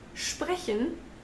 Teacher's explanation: in sprechen, the S actually is a sh.